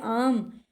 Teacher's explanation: तो ये हमारा पश्च यानी कि पीछे वाले भाग से निकल के आया है, जिह्वा के पीछे वाले भाग से निकल के आया है · वो हमारा बिल्कुल सीधा कंठ में से निकल के आता है, ना किसी को स्पर्श करता है, ना कहीं पर रुकता है, ना उसको कोई ठोकर लगती है, ना कुछ, सीधा फटाक से एकदम सीधा बाहर। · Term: पश्च स्वर